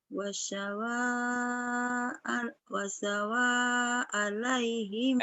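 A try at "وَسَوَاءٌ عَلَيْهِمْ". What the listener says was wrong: Bukan wasawa alaihim bukan. Itu ada tanwin. Wasawaun ini domatain. Bukan wasawaan. Wasawaun.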